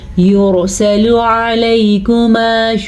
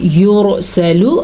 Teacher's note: را ساکن ہے اور را ساکن سے پہلے پیش ہے تو را ہم پر پڑھیں گے یعنی کہ موٹی کر کے پڑھی جائے گی، اور لام ہمیشہ ہی باریک پڑھا جاتا ہے۔